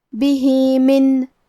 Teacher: یہاں حکم ہے مد صلہ صغرا، ہم اپنی آواز 2 مد کے برابر لمبی کریں گے.